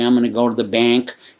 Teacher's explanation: that Midwestern accent kind of squeezes the A's and E's · If you're from the Midwest like I am, it creeps into your vowels when you say, I'm going to go to the bank. It's like that Midwestern accent kind of squeezes the A's into E's. So that E is like an omnipresent vowel.